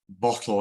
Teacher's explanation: when we say bottle it's the first syllable that's stressed